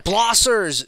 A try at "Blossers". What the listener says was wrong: I think that's pronounced Blosers, actually. I think that's Blosser. I mean, yeah, Blosers. Because Blossers would be like... B-L-O-S-S-E-R-S.